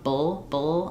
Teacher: I'm really not putting much between the B and the L. This is what's called a salabic L where I'm just going very quickly from the B to the sound. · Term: syllabic L